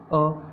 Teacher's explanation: अ में भी हमारे होठ कैसे बन रहे हैं? सीधे बन रहे हैं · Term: अवृत्ताकार